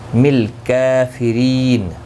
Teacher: کاف کے اوپر کھڑی زبر ہے، ایک الف کی مقدار کے برابر کھینچ کر پڑھیں گے. ری یا مدہ ہے، اور وقف کی صورت میں نون ساکن پڑھا جائے گا.